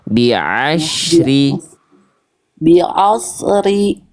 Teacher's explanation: Ain itu dilafalkan lebih ngeden